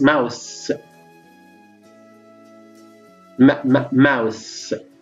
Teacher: between the upper upper lip upper upper lip and lower lip air goes out through the nose through the nasal cavity and it is voiced of course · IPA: m